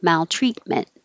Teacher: we don't release either of these t's hold them hold your tongue in the t position